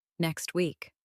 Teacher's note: In very careful pronunciation, you may hear the T in next. But in fast, natural speech, that sound may become very weak. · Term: sounds disappear